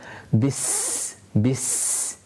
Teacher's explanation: the seen is again a letter where we have sound and air continued whilst pronouncing it in order to make it more audible as well.